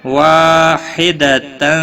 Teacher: تنوین کے بعد حروف اخفا کا فا آیا ہے، اخفا حقیقی ہوگا، گنہ کے ساتھ پڑھیں گے